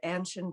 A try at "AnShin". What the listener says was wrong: Yeah, you do okay. Well, it's really typically American to pronounce that first A hard, AnShin, but really it's a soft A. It's AnShin.